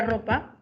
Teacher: sabemos que el sonido siempre va a ser vibrante múltiple